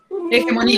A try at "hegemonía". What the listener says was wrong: no, eje. No la leas ajá, lee la G como una J, hegemonía,